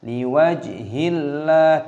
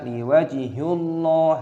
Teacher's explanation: ketika kata Allah didahului oleh kasrah, dibaca liwajhillah, jangan dibaca liwajhullah, itu tidak diperbolehkan.